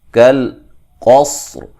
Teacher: اس کاف کو باریک, اس قاف کو موٹا, یہ موٹا قاف ہے. صاد کو بھی موٹا ادا کریں گے, را کو بھی موٹا ادا کریں گے, وقفاً ملانے کی صورت میں را باریک ہوگا.